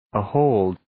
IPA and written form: ə'hoʊld (Ahold)